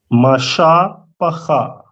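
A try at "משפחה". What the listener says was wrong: Perfect. Perfect.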